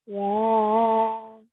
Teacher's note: the ya carries a medium long stretch, so make sure to prolong it for a bit longer